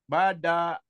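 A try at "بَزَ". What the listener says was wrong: baza. Zalnya agak rapuh ya. Baza, gak cedal.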